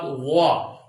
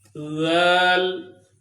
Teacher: وا کو پر کر کے یعنی موٹا کر کے پڑھنا ہے، ذل کو باریک کر کے پڑھنا ہے